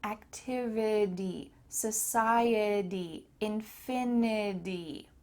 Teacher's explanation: in American English that T is going to often sound like a D